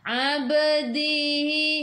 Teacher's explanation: Ba qalqalah sughra lantunannya kecil